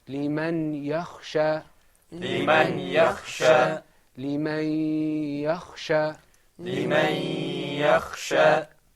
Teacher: the noon sakina in liman and the ya became one stressed letter. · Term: idgham